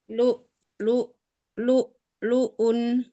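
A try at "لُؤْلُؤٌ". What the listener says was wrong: Jangan terlalu lama, hamzahnya sepi, sesaat saja.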